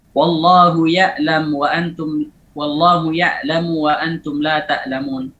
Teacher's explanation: Kemudian nutqiha shibhal hamzah, mengucapkan ain mirip dengan hamzah